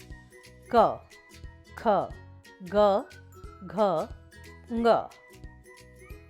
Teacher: क वर्ग के व्यंजन कंठ कहलाते हैं, क्योंकि ये सीधे कंठ, गले से निकलते हैं और जीभ मुख के किसी भी भाग को स्पर्श नहीं करती है।